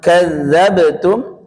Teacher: ba memantul ringan ya, dan bentuknya tipis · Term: qalqalah